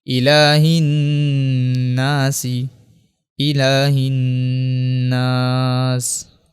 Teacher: چونکہ نون کے اوپر جو ہے وہ تشدید ہے اس لیے یہاں پہ غنہ کریں گے۔